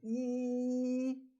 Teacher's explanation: when I say e my lips are spread